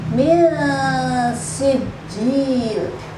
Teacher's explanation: Dua ketukan, mendengung dan memadukan kedua suara antara sin dan nun mati. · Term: ikhfa